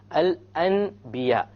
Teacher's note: instead of pronouncing the n sound you pronounce the M sound